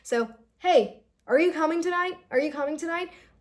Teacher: So when there is uncertainty, so your intonation, it will go high at the end.